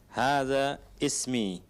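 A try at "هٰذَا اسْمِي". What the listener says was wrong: Hadasmi. Hadasmi. Kenapa kita tidak baca alifnya? Ada apa dengan hamzanya itu? Kenapa tidak kita baca? Hamzatul wasl. Ditulis tapi tidak dibaca ketika di tengah. Ketika di tengah.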